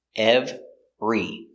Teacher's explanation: we pronounce it with two syllables we push them together